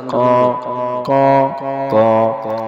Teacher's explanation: ক চন্দ্রবিন্দু, ক নাকের ভিতর থেকে